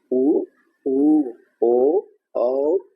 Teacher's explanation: Circle के जैसे गोल होंगे तो उसको वृत्ताकार स्वर कहा जाता है।